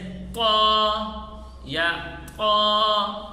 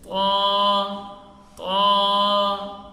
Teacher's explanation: صحیح ادائیگی یہ ہے کہ زبان کی نوک ثنایا علیہ کی جڑ یعنی مخرج سے حرف نکالتے ہوئے موٹا کر کے پڑھیں اور ایک الف سے زیادہ لمبا نہ کریں، زبان کی جڑ اوپر نہ لگائیں بلکہ اٹھائیں گے۔